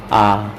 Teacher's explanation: जिह्वा जो है मुख के बीच में भी आ जाता है फ्रेंड्स, और मुख काफ़ी अधिक खुला भी रहता है फ्रेंड्स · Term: विवृत